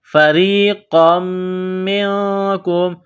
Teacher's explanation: نقطہ والا قاف ہے، بڑا قاف، اس کو موٹا کرنا ہے